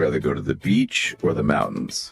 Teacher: Up and down on both beach and mountains.